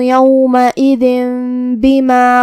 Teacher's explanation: با حروف الاقلاب میں سے ہے، اور اقلاب کا معنی ہے بدل دینا، تو ہم یہ تنوین کو میم میں بدل کے اور غنہ کے ساتھ یہ حکم کو ادا کریں گے